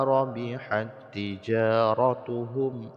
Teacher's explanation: Jadi ta ini tidak lagi dibaca tapi langsung pada harokat pada tasdid ta setelahnya.